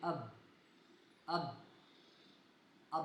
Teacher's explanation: مثال کے طور پہ ہم پڑھتے ہیں اب، اب اب آپ دیکھیے کہ میرے ہونٹ کے جو باہر خشکی والے حصے ہیں وہ آپس میں مل رہے ہیں، تو اس سے معلوم ہوا کہ حرف با کا جو مخرج ہے وہ آپ کے ہونٹوں کا خشکی والا حصہ ہے۔